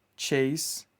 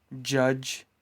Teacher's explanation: Ch is voiceless. J is voiced.